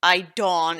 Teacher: She put emphasis on the second syllable in his name and changed the E to the O